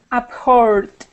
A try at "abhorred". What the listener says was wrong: Now, just remember when you pronounce that D sound, right now it's sounding like a T. You're saying abhort. You want to pull your tongue back and think of an R, kind of like if you were to say Buenos Aires, and you take Aires, and then you drop off that N.